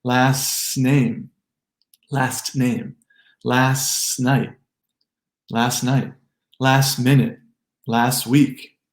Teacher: So if the next word begins with a consonant sound, which is statistically high, we've hit the trifecta. And the T's almost always get replaced by more S sound.